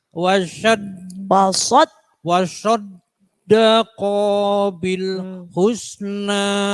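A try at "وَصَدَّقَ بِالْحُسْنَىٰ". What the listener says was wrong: Ko-nya nggak boleh panjang. Wasaddaqa bil. Langsung.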